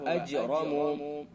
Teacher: جیم حروف قلقلہ میں سے اور ساکن ہے اس لیے قلقلہ ہوگا